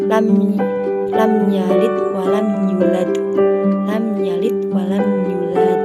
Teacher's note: Yang kedua yaitu ada qalqalah kubro, yaitu bacaan qalqalah kubro terjadi jika salah satu dari 5 huruf qalqalah berharokat sukun pada akhir kata dan dibaca mati atau sukun. Cara membacanya yaitu seperti dipantulkan tetapi berat atau tebal